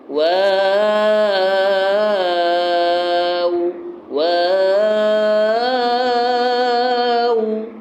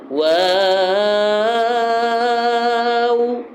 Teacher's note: ہونٹ گول کر کے پھر آواز نکالیں، واو واو، شروع میں بھی ہونٹ گول کرنے، آخر میں بھی ہونٹ گول کرنے، اور 5 الف کھینچنے ہیں